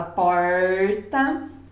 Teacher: Quando eu falo porta, é como se eu enrolasse a língua · eu ainda tenho um R que chama retroflexo, que é aquele R do interior, que fala porta.